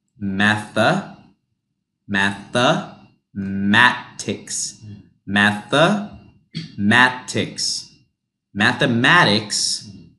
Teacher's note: I know there's an E, but this becomes a UH sound.